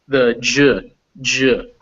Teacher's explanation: they start as plosives they end as fricatives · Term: a fricatives